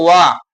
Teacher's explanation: ದಂತೋಷ್ಟ ಅಂದ್ರೆ ಹಲ್ಲು ಮತ್ತು ತುಟಿಯಿಂದ ಉತ್ಪತ್ತಿ ಆಗೋದು ವ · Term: ದಂತೋಷ್ಠ್ಯ